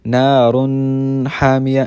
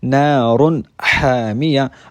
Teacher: اور آپ کو پتہ ہے کہ ح بھی حروف حلقی میں سے ایک حرف ہے، تو اس 2 پیش تنوین میں بھی غنہ نہیں ہوگا